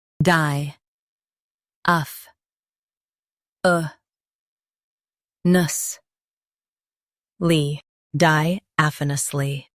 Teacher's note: Emphasize AF and keep nusly soft.